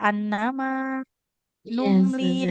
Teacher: mim dengan lamnya sama-sama harus dipanjangkan